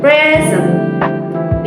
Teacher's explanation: in the word present or as a noun meaning give, the stress is on the first syllables